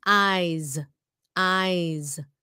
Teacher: ending sound là cái chữ z chứ không có phải chữ S đâu